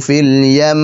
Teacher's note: Karena dengan adanya ghunnah mutawwalah, ghunnah yang panjang , sudah diketahui bahwa huruf tersebut memiliki tashdid.